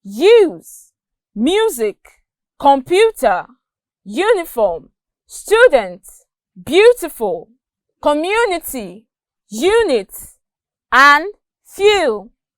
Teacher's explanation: The j sound is produced by raising the middle part of our tongue against the center of the roof of our mouth without touching it and with our lips rounded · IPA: /ju/